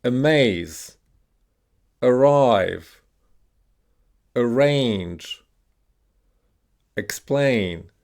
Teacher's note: these words are stressed on the second syllable.